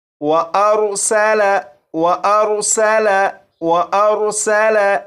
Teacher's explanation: یہ جو پہلا لفظ ہے اسے 3 مرتبہ میں پڑھوں گا، اس کے بعد 4 مرتبہ آپ پڑھیے گا، اور اس لفظ میں سین ہے، سین کو سیٹی کی آواز کے ساتھ پڑھیں گے